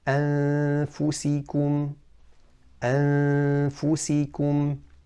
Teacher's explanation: We didn't say أنفسكم, we didn't say أن, that would have been idghar. We didn't touch the makhraj of Noon with the tongue, and we didn't say أفسهم or أفسكم, so we didn't do a merging, which is idgham. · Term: Ikhfa of the Noon